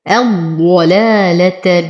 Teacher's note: انتبه لتخليص اللامات من تفخيم الضاد